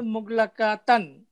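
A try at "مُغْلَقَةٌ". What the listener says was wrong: আচ্ছা, ওই গোলকফে আধুনি হয় না, গোলকফে আধুনি হয় না, আমরা মুগলা কতন, মুগলা কতন। না, কা হবে না, ক, মুগলা কতন।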